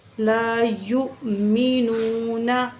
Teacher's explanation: यू, या पेश हमज़ा यू, मीम से मी, नून पेश वाव नू, वाव साकिन, मा कबल पेश है, वाव मद है, दो अलिफ के बराबर खींच के पढ़ेंगे।